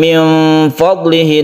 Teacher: Maka caranya yaitu ketika kita membaca nun sukun ini, nun mati ini, kita bersiap membaca fa. Jadi rongga mulut kita itu sudah siap membaca fa, kemudian kita dengungkan. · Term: ikhfa